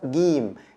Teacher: in the Egyptian dialect it's pronounced gim, like the G in English